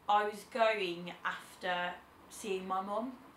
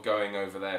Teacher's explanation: Another trait of the Birmingham accent is the sort of intrusive G sound. Yep, so it's pronounced as a hard G rather than a soft G.